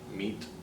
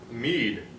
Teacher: the last consonant is unvoiced